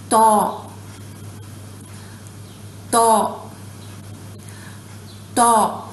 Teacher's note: My tongue raises from the middle, presses up.